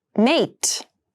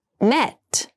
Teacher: Mate has the more closed sound and met has the more open sound.